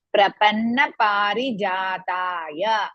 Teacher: ಪ take more time ರಿ less time ಜಾ ಮೋರ್ ಟೈಮ್ ತ ಮೋರ್ ಟೈಮ್ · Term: ದೀರ್ಘ